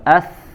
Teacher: mengalir suara, mengalir udara, mengalir. Berarti dia memiliki sifat rokhawah, juga memiliki sifat hams.